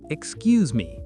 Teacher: And your voice should be polite, going up slightly at the end.